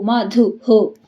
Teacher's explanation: ದು ಮುಂದೆ ವಿಸರ್ಗ ಅದಕ್ಕೆ ಹು